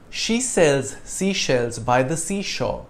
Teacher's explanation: The alternation of the S and SH sounds makes this tricky, and you usually end up switching the two sounds and saying them in precisely the wrong places.